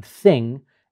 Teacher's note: the tip of the tongue is coming between the teeth but it's leaving just enough space for the air to come out turbulently and to create that sound that is considered a fricative so